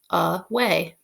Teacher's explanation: write it on your board away is an interesting word because the first a makes the schwa sound like ah and then the long a sound is spelled with a y